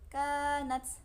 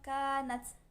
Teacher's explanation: Nats, kanats, taknya hukumnya sama seperti kaf yang tadi, punya sifat syiddah, suaranya ditahan dulu, bunyi hamasnya belakangan. Jadi bacanya kanats gitu.